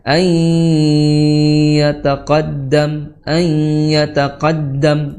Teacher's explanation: Dihukumi sebagai idgham bighunah. Ya, digunahkan. Jangan sampai hilang gunahnya.